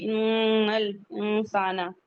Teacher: ان نون مشدد ہے، غنہ کریں گے